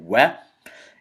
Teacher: The wa is a vowel, and it is pronounced from the lips. You pout your lips and you say wa.